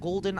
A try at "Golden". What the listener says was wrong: I didn't hear the G when you said that. That sounded like you said Olden.